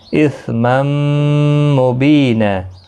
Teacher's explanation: تنوین کے بعد یرملون کا میم آئے، ادغام مع الغنہ ہوگا، گنہ کے ساتھ پڑھیں گے